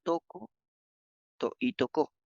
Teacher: esta distinción está dada por la presencia del acento en diferentes sílabas de ambas realizaciones fonéticas el acento se realiza mediante la intensificación de una de las